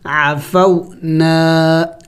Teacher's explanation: الف مدہ ہے، اس کو کھینچیں گے کہ الف کا مقدار